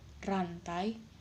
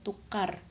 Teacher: pada kata rantai bunyi tidak terlalu getar, sedangkan pada kata tukar terdengar lebih jelas.